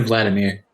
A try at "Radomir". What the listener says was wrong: Radomir. Yeah, Radomir, not Vladimir.